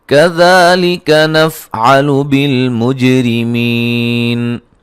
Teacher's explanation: بالمج جیم کو ہلا کے پڑھیں گے، قلقلہ ہے